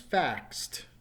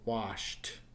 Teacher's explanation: Hopefully you can hear that T at the end. Notice, once again, there's no extra syllable. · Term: T sound